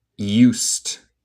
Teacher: el D suena como T.